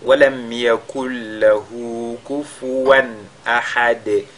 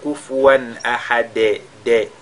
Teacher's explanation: il faudra éviter de lire ce dal là comme un e. On entend kufuwan ahad de. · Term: qalqala